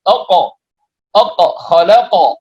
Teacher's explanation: bacaan qalqalah di sini taqo tidak sampai pada berbunyi hamzah